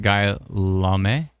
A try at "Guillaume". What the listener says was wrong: I think it might be I don't think you pronounce the L's. I think it's Guillaume.